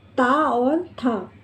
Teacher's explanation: दांत। इनका उच्चारण स्थान है दांत। ता, था, इनमें दांत आपस में मिलते हैं और बोला जाता है ता, था।